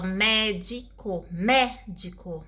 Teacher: Então, a sílaba tônica aí é mé, né? E o restante é tudo atônica.